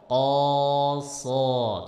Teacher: itu kan naik pangkal lidahnya, pancing pakai huruf qaf